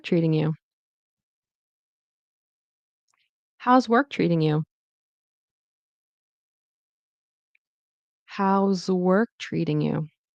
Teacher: I don't say treating, I do a flap T, which is like a D · notice TR, I pronounce it as CH, with an R